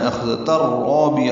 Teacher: تنوین کے بعد را آنے کی وجہ سے ادغام ہے، یہ ادغام کامل ہے، تا را سے ملا دیا جائے گا، ادغام تام بھی کہتے ہیں، ادغام کامل ہے، ادغام بلا غنہ ہے۔